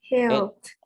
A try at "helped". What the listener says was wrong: Helped. Very good. Exactly.